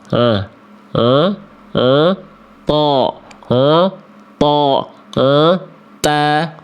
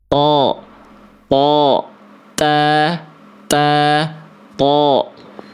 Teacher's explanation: huruf to itu ujung lidahnya disentuhkan ke pangkal gigi seri atas